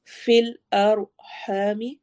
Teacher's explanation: ہا حروف حلقی میں سے، تھروٹ لیٹرز میں سے ہے، حلق کے مڈل سے ادا ہونا ہے.